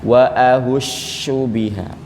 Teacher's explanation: dia itu suaranya bukan safir safir itu tajam itu Sin tapi dia ini lebih ke nyebar suaranya karena poisi lidah ini Tengah lidah Bapak Ibu naik dia Aisy